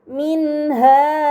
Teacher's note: nun sukun bertemu dengan huruf Ha ini dinamakan izhar halqi maka nun sukun harus dibaca secara jelas